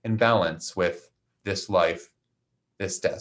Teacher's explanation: the with doesn't have quite as much stress. So it's a little quieter in balance with this life, this death.